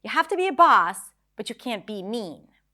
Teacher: So even though mean is not high in pitch, it's still stressed because it's emphasized. It's longer, more volume, which is another way for us to stress words in English.